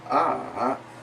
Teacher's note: the falling Rising tone or goes down and then up